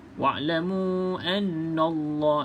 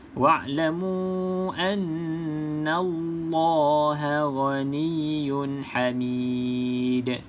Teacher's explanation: Maka jelaskan huruf nun baris atas dia na, bukan no.